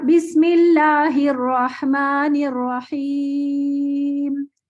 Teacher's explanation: جب میں رحیم پہ وقف کروں گی تو میں نے اس کو صرف رحیم کر کے وقف نہیں کرنا, خوبصورتی کے لیے میں اس کو لمبا کر کے وقف کروں گی. اور بسم اللہ الرحمن الرحیم 4 حرکت تک لمبا کر سکتی ہوں میں سے, 4 اور 6 حرکت تک لمبا کر سکتی ہوں, 4 حرکت تک یا 6 حرکت تک.